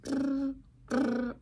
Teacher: the bilabial trill, would be when you like flap your lips and go brr, brr.